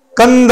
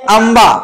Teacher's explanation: आपल्या अनुस्वारचा उच्चार काय होते एक तर न होते नाहीतर म होते